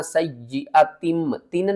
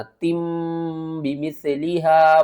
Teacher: اقلاب، اقلاب کا مطلب ہوتا ہے بدلنا، تنوین کو ہم میم میں بدل دیں گے